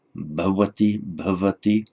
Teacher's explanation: On its own, intervocalically, that's between two vowels, probably like a v